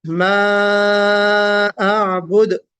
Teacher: अअबुद कलकला होगा दार पर